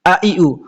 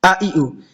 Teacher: আলিফের উচ্চারণটা ধাক্কা দিয়ে করা লাগে না, হামজার উচ্চারণটা ধাক্কা দিয়ে করতে হয়